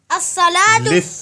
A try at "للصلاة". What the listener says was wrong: للصلاۃ یہ دیکھو، یہ لام لکھا ہوا ہے.